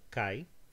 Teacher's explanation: only has 1 syllable and it's heavy, so the stress goes there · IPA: [kai]